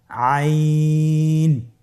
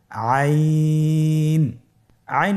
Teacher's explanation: আইন হরফটি উচ্চারণের সময় অবশ্যই তিন আলিফ টেনে পড়তে হবে। এখন আইন হরফটি বারিক হরফ। · আইন হরফটি কণ্ঠনালীর মধ্যখান থেকে উচ্চারিত হয়।